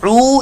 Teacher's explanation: ये वाउ मद्दा है, एक अलिफ दो हरकात के बराबर, इसको लंबा करके पढ़ेंगे